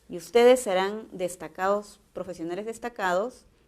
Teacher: el tono es descendente porque es una afirmación